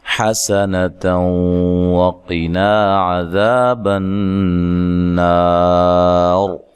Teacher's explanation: حسنۃ وقنا عذاب النار، حا کو لمبا نہیں کرنا، سین کو باریک سیٹی سے ادا کرنا ہے، اچھا، اور لمبا نہیں کرنا۔